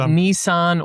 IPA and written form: nisan (Nissan)